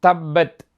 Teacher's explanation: இரு உதடுகளின் உட்புறத்தில் பா உண்டாகும்